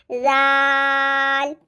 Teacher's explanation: لیکن جو زال ہے اس میں سیٹی کی آواز نہیں آئے گی. اکثر لوگ اس میں بھی سیٹی لے کے آتے ہیں.